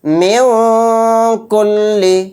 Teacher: نون کی آواز کو ناک میں چھپا کر اخفا کریں گے